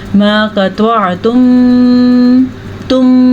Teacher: गुन्ने के लिए आपको होंठों को बंद करना पड़ेगा और गुन्ने की आवाज़ नाक में चली जाती है, तो आप इसको गुन्ना करेंगे। · रुक जाना और आवाज़ का नाक के अंदर आना · ये जो हमारे पास है यहाँ पे मीम पे गुन्ना है, सीधा सीधा इसको इदगाम शफ़वी का कायदा कहा जाता है। मीम साकिन के बाद मीम है तो ये इदगाम शफ़वी का कायदा है।